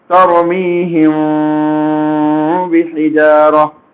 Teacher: میم ساکن کے بعد اگر با ہو تو میم کو با میں چھپائیں گے. چھپانے کا انداز بھی غننے کے ساتھ ہوگا. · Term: اخفا شفوی